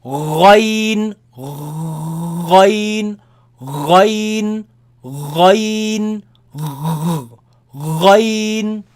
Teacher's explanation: Is when you gargle, there's a gargling sound from the top part of the throat where kha comes from, but kha is dry, but this one is a little wet. That sound.